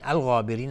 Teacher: غین از حروف استعلاء غلیظ تلفظ میشه و الف هم تابع غین غلیظ تلفظ میشه